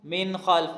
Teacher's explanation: نون ساکن ہے، یہاں پہ غنہ ہونا تھا لیکن نہیں ہو رہا، کیوں؟ اس کے بعد خا آ گیا، جہاں پہ حروف حلقی آ جائے وہاں پہ غنہ نہیں ہوتا۔